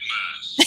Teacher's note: The TH is making an F sound there.